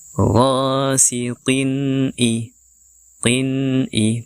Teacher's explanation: Bacaan jelas di sini tidak didengungkan dan juga tidak disamarkan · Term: idhar